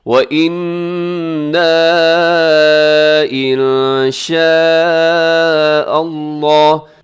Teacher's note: وَإِنَّا إِن شَاءَ اللَّهُ، یہاں پہ وَإِنَّا اس کے اندر ایک تو غنہ ہے، دوسرے اس کے اوپر جو مد ہے وہ چھوٹی مد ہے. اس میں کیا ہوتا ہے کہ 4 سیکنڈ تک آپ نے اس کو لمبا کرنا ہے.